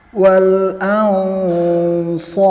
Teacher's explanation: Ini kita baca jadi mad arid karena kita wakaf. Jadi kita baca dia 4 harokat.